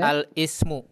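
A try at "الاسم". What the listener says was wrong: Ini hamzah wasal di tengah. La, jangan al.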